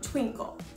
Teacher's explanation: textbook the first additional type kind of meter is called Roshi this includes one stressed syllable followed by an unstressed syllable · This includes 1 stressed syllable followed by an unstressed syllable. For example, like the word twinkle. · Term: trochee